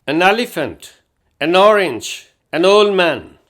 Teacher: این کو بولتے وقت چھوٹی سی الف کی آواز دے کر این کو آگے والے لفظ کے ساتھ ہی ملا دیتے ہیں